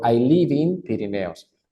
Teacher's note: como termina en consonante B de vaca la puedo pegar con in